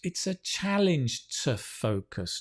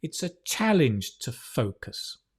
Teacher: Notice the to, right, becomes t because of the stress. We don't stress to, we stress challenge and focus.